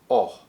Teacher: our mouth is open, our tongue is back, and our lips are rounded when we make the sound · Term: open back-rounded vowel sound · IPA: /ɒ/